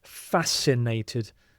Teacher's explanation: So the C you don't really hear at all